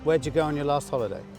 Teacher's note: We can reduce did you to ja.